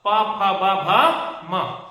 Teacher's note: दोनों होठ को क्या करना पड़ेगा, यहां पे जोड़ना पड़ेगा · प दोनों होठ जुड़ रहे हैं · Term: ओष्ठ